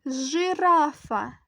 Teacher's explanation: наступне слово складається із трьох складів з шести звуків наголос падає на середній склад